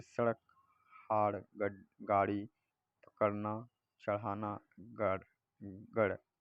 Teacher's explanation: इनका उच्चारण करते समय जीभ झटके से ऊपर जाती है। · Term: उच्छ्रित